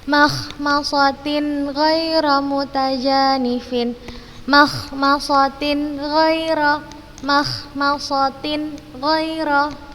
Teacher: Tanwin ketika bertemu dengan ghain kita bacanya jelas.